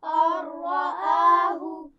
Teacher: را آگے ہے. ٹھیک ہے، تو ہم نے را کے ساتھ ملا کر پڑھا اور غنہ بھی نہیں کیا